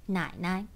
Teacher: the neutral tone has the highest pitch when it's put after the third tone. We label it 4, for example, 奶奶.